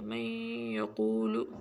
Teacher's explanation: गुन्ना करेंगे और क़ाफ को मोटा पढ़ेंगे